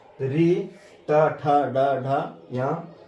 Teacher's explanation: ऋ ट, ठ, ड, ढ य का उच्चारण स्थान मूर्धा से होता है।